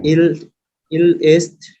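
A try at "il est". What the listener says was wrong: এস্ট না, হ্যাঁ, এ এটার উচ্চারণ এ,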